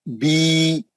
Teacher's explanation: जेर के बाद या आएगा हम उसको 2 हरकत पढ़ेंगे, खींच के पढ़ेंगे। इसको बोलते मध्य असली।